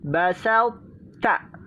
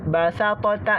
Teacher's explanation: Caranya dengan mengidghamkan adalah dengan mengeluarkan huruf ta dari makhrajnya tanpa diqalqalahkan, maka kita tidak baca basata, tidak. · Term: sifat itbaq